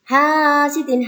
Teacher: Hasidin ha dibaca 2 harokat karena mat tabi'i. Hasidin ida jelas karena ini adalah idhar halqi.